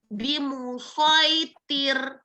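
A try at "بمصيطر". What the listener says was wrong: Nah, itu berubahlah huruf to-nya jadi ta. Coba lagi.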